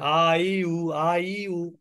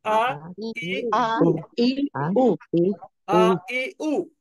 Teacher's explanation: এই হামজাটা একটু হালকা ধাক্কার মত উচ্চারিত হবে